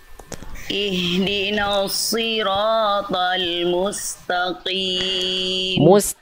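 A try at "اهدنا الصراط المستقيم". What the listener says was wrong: Bukan mustaqim to, bukan to tapi ta. Huruf ta huruf tipis. Mustaq to bukan to, ta. Dan huruf kof itu Bunda, ketika berharokat kasroh dia tebalnya menipis.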